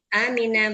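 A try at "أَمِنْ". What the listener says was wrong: Nah, pendek hanya Amin.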